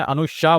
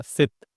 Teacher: मतलब मेरा जीभ जो है वो नीचे के दांत से सट रहा था। सित लेकिन जब मैंने अनुशा बोला श तो मेरा नीचे के दांत से जीभ नहीं सट रहा था।